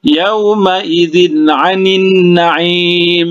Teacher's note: Huruf ain ini termasuk huruf izhar. Jadi tidak boleh didengungkan. Yauma idzin 'anin na'im ya, langsung diizharkan ya.